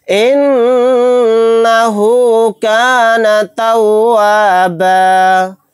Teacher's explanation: إِنَّهُ كَانَ تَوَّابًا، یہاں پر دیکھیں نون کے اوپر تشدید ہے، یہاں پر غنہ کر کے پڑھیں گے۔ آیت کرنے کی صورت میں با الف کے ساتھ ایک زبر کو پڑھیں گے، پھر 2 زبر نہیں پڑھے جائیں گے